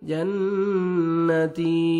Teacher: वदखुली जन्ना, नून मुशद्दद है, गुन्ना करेंगे। जन्नती या मद्दा ता को 1 सेकंड खींचना है।